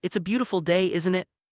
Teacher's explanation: When you lower your voice at the end of a question tag, you're usually just seeking agreement. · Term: falling intonation